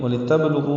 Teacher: با ساکن پہ قلقلہ ہے